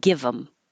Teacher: get rid of the th here and then you connect the V to the m